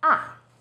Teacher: starts High then Falls sharply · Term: fourth tone